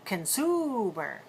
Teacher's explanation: Notice that the first syllable is very weak. Not con, but can. See, my mouth is very relaxed.